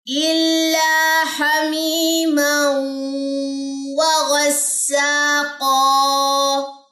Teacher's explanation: واو کی زبر ہے، غین کی زبر ہے، وہ لمبی نہیں کرنی